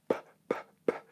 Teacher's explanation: Pie, pie, pie, pie, pie. So P is a plosive sound in English. P, p, p. Airflow stops and then explodes out.